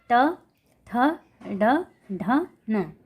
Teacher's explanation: ये मूर्धा से टकरा रहे हैं, मूर्धा से स्पर्श होकर बाहर निकल रहे हैं, इसलिए इन्हें मूर्धन्य व्यंजन कहा जाता